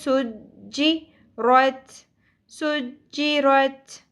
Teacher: सीन में सीटी का एलिमेंट क्लियर होना चाहिए. जीम के ऊपर तशदीद है.